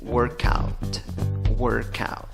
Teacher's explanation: tienes que unir la K con la A